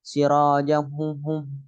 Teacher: Ada suara maka lewat hidung karena ini bi gunnah.